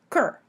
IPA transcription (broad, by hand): kɹ